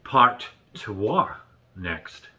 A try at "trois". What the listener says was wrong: Trois, not twat. Sounds like twat.